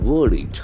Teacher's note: The middle R is silent.